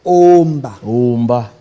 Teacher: il y a la voyelle O initiale qui est en prolongation, qui se prononce de manière intégrale comme en latin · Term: quantité vocalique